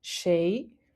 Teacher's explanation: it's the second tone the rising tone